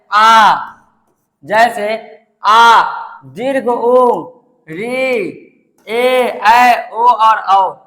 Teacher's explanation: जिन वर्णों के उच्चारण में दो मात्राए लगती है उन्ह दीर्घ स्वर कहते है